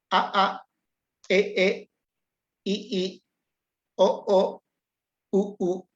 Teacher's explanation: La vocal rearticulada es una vocal que divide su sonido, pero es breve el sonido.